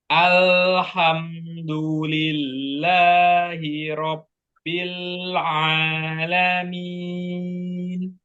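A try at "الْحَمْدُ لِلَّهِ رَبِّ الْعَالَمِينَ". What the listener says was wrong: ya, ya itu masuk ini sih, samar-samar pantulannya, hampir nggak kedengeran ya, tapi ada. Coba alha, coba itu aja. Alha, alha, Rabbil a, Rabbil a. Alhamdulillahi Rabbil Alamin.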